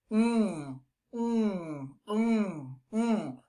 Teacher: So we need to keep the sound in there. We don't need to release it, through our mouth. It has to be released through our nose. This one is very nasal.